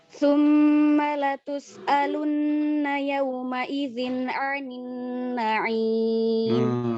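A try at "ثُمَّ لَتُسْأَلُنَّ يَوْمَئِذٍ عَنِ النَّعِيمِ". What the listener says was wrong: Masya Allah, tabarakallah. Barakallahu fikum. Bagus bacaannya.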